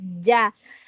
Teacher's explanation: ja keluar dari tengah lidah menempel ke langit-langit mulut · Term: huruf jim